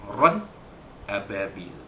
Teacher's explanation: Ran ababil, ra 2 di atas ran bertemu dengan hamzah pada ababil, ya, izhar halqi, ya, tanwin bertemu dengan hamzah, ya, jadi tanwin itu dinyatakan bunyinya tanpa dengung